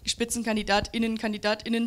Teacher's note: diese kurze Pause und dieser glottale Anlaut, den man vor das I setzt